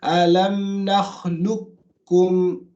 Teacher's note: So you don't read the qaf, you read the kaf.